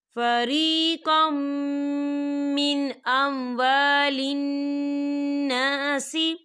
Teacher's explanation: دیکھیں فریقم، قوف کے پر تنوین ہے اور تنوین کے بعد میم آ رہا ہے، اور میم جو ہے حرف یرملون میں سے ہے، تو یہاں پر ادغام ہوگا اور ہم اسے غنّے کے ساتھ پڑھیں گے۔